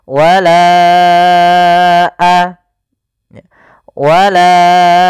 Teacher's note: bukan pada lafalanya maka kita namakan dengan Mad Jaiz munfasil maka kita panjangkan huruf laanya sepanjang empat harakat atau lima harakat · Wala baru baca a. Panjangkan la-nya dulu 4 harokat baru lepas.